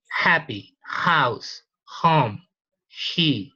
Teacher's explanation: So the production of this one is unvoiced, glottal, and fricative.